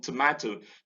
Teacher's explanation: The O in tomato, the first O is weak, stress falls on MA, and so the schwa occurs in the weak unstressed syllable